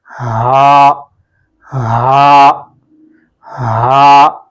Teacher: ہا کی جو آواز تھوڑی سی وائبریٹ کے ساتھ ادا ہوتی ہے، یعنی تھوڑی گہری آواز ہوتی ہے، اور جب آپ اس کو پڑھتے ہیں آپ کو خود محسوس ہوتا ہے کہ آپ کی جو آواز ہے وہ تھوڑی گہری ادا ہوتی ہے۔